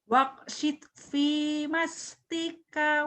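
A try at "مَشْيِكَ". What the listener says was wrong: Masjika, bukan mastika, titiknya di bawah.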